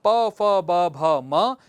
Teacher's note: इनका उच्चारण स्थान ओष्ठ होता है